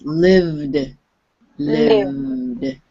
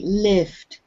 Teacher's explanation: you said the v a little bit like an f so it sounded like lift